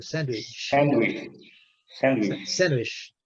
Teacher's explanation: Esse D não é pronunciado, não.